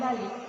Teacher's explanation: pada kata balik bunyi yang mengikutinya adalah hamsa atau glotal stop · Pada kata balik diucapkan balik, vokal i diucapkan rendah. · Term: glottal stop